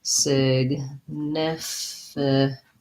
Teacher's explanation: So significantly has second syllable stress. It has the I vowel in many of its syllables.